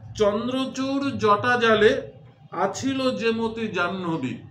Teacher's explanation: চন্দ্রচূড়ে চ, জটা জালে জ, আছিল ছ। এই যে চ ছ বর্গীয় জ, এর উচ্চারণ স্থান একই, সেটা হচ্ছে তালু। তালুতে আঘাত পেয়ে একই স্থান থেকে বর্ণগুলো উচ্চারিত হয়ে একটা ধ্বনি সাম্য সৃষ্টি করেছে, তাই এটি শ্রুত্যনুপ্রাস অলঙ্কার।